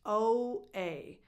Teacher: the first two vowels, the O and the A, are very defined as they are in the alphabet